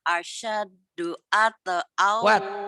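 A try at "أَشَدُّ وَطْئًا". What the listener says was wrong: Asyaddu wat, bukan at. Wat. Asyaddu wat.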